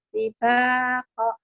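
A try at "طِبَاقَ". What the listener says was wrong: tibaka, tibaka. Koknya pendek.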